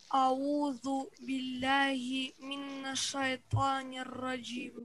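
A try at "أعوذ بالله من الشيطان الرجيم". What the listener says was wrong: Нет, не делай минна. Мина. Там нет удвоения.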